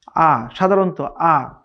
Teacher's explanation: কোনো ধরনের ধাক্কা হবে না, খুবই স্মুথলি আ, আ এরকম হবে। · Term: আলিফ